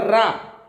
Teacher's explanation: अस्थिर नहीं रह रही है। जीभ हमारी लुढ़क रही है · ऐसा व्यंजन जिसका उच्चारण करते समय जिभ्या अस्थिर रहे। यानी स्थिर ना रह सके। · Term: लुंठित व्यंजन